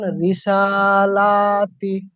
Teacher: সিনের উপর খাড়া জবর এসছে, খাড়া জবরটি আলিফ মাদ্দার সমান। এটি এক আলিফ টান পরিমাণ দিয়ে পড়তে হয়। এক আলিফ পরিমাণ টান দিয়ে পড়তে হয়, লামের হ্যাঁ।